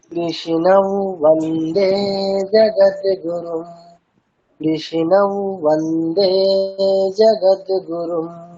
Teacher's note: কৃষ্ণমের অনুসারটা কি হবে? অন্তস্থ ব, মানে নাকে নাকে ব।